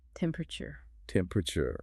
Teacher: This is a perfect illustration of what we call syllabic compression in fast speech. It's written as 4 syllables, but it's frequently reduced to 3. · You know, the full 4-syllable temperature is technically the most precise standard, but quick British delivery often compresses those internal vowel sounds. The learner should aim for clarity in that internal poo sound, avoiding collapsing the word completely.